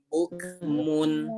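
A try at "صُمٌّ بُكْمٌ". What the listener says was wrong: Masih ada yang kurang ditahan atau kurang gunahnya ya.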